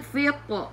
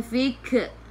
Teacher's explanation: Dan qaf kena baca dengan tebal. Jangan nipis.